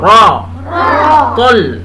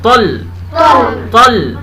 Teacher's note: रा गोल करके मोटा करके रा, तल, ये भी गोल करके तल